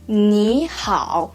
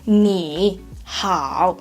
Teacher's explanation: When we try to say the first hanzi, you, 你, so will be the first tone, right? But when we combine them together, especially the second word is third tone as well. So we try to change the first one, the tone, into the second tone. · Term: changing tones